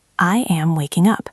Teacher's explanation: Listen to the stress. It is on the word waking.